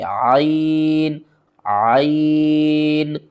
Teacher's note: یہاں پر عین کو آپ نے حلق کے درمیان والے حصے سے ادا کرنا ہے، اور عین کا مخرج آپ نے ٹھیک نکالنا ہے۔